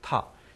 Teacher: 근데 타라는 소리는 아주 정확하게는 트 소리가 먼저 발음된 다음에 아 모음이 발음이 되기 때문에 성대 진동은 소리가 나는 것보다 조금 늦어요. 뭐 100분의 5초라든가 아주 짧은 시차이긴 하지만요.